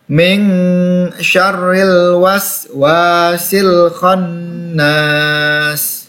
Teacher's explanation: ini ada ikhfa, hukum tajwidnya ikhfa anak-anak, dibaca dengung. Ming, dibaca dengung 2 harokat.